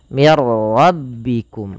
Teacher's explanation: Idgham itu memasukkan. Maka nunnya dimasukkan ke ro dan tidak boleh ditahan. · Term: idgham bila ghunah